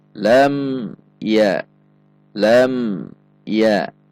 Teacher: dan bukan huruf ba maka mim sukun dibaca Ilham syafawi atau jelas dan tidak dengung perhatikan jangan sampai memantul